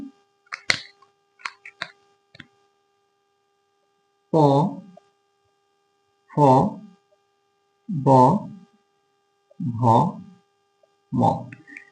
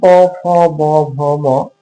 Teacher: তো আমরা যদি দেখি ওষ্ঠ অর্থাৎ যে ধ্বনি উচ্চারণের সময় উচ্চারিত ধ্বনি দুই ঠোঁটের উচ্চারিত ধ্বনি যখন হচ্ছে ঠোঁটের কাছে এসে দুই ঠোঁট এটা বাধাপ্রাপ্ত হবে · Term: ওষ্ঠ ধ্বনি